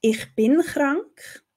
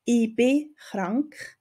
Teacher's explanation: Da sagt man zum Beispiel, ich bin krank, also von ich bleibt das CH, bei bin bleibt das N, es bleibt eigentlich alles bestehen, während man dann in Bern zum Beispiel eher sagt, ich bin krank, also das CH von ich und das N von bin wird weggelassen. Also ja, es ist ein Merkmal der schweizerdeutschen Sprache, dass Konsonanten am Ende von kurzen Wörtern eher weggelassen werden.